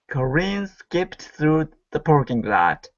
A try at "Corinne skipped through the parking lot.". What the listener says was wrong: Okay, that's better. Nice job.